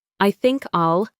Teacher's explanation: I think I'll link together. The K in think links to the I.